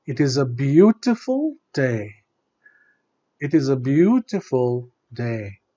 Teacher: Day has to come down, but only in close-ended questions.